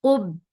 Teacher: Ub, off is heavy for the circle lips attached with ba. Ba will get sifa of shidda, and shidda is no flow of sound. Ub, and that with kasra, the sound is very short.